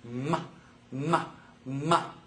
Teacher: these are bilabials two lips together M M M voiced they're voiced but they're also considered nasal